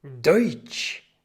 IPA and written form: dɔʏtʃ (Deutsch)